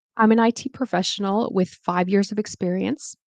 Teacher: You could see that I made the intonation kind of go down, and then I made it go up.